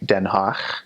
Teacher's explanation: Dutch does have a guttural in it. It has a guttural G.